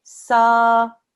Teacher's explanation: Because you've got this alif straight afterwards, this is an alif madda, that tells you that this sa, you stretch it out for 2 seconds, yeah? Sa, it's a smooth sound, it's not sa-a, okay? Sa, that's 2 seconds.